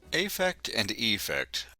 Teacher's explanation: although a and e are different vowels we tend to give them the same e sound a great deal of the time